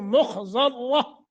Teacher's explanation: خا ذات را تینوں موٹے کرنے ہیں